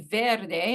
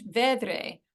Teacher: The R and the D just switch places. It's called metathesis, and it's a common linguistic phenomenon.